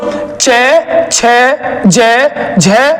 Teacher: च वर्ग को स्पर्श संघर्षी वर्ण भी कहते हैं